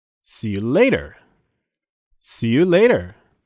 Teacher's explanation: The first syllable in later has a stress.